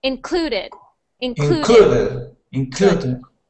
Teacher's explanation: So we stress the syllable clue. So we say clue the loudest. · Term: stress on the syllable